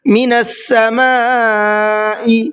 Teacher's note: بڑا مد ہے، مد متصل ہے، اس کو 4 سے 5 الف کی برابر کھینچ کر کے پڑھنا ہے۔